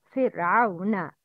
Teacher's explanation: Ra with sukun after kasra is always murakkaka.